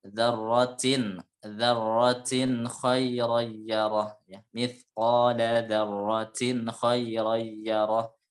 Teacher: harus jelas bacanya, nggak boleh ada gunnah atau tahanan. Jadi tidak boleh ditahan.